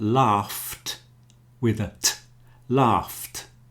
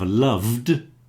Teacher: the T is the unvoiced version of the D